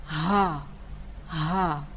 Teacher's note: ha itu pada pangkal tenggorokan atau dasar tenggorokan, langsung kita keluarkan bunyi ha itu dari dasar itu. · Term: ha besar